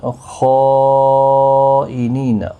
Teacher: خائنین، خا حروف مستعلیہ ہے، پر پڑھا جائے گا، اور یہاں پر مد متصل بھی ہے، 4 الف کی مقدار کے برابر کھینچ کر بھی پڑھیں گے۔ نی یا مدہ ہے، 1 الف کی مقدار کے برابر کھینچیں گے۔